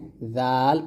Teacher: জাল উচ্চারণ করবেন উপরের দাঁতের আগে লাগিয়ে জাল পাতলা করে।